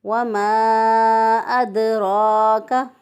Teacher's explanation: دال جو ہے ان پر ساکن حالت میں قلقلہ جو ہے وہ زیادہ واضح ہوتا ہے، زیادہ اسٹرانگ ہوتا ہے